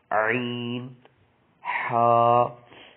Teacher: حلق کے درمیان والے حصے سے ادا ہوتے ہیں